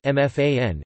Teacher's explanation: with stress on the root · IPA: [ʔʊmˈfaːʀən]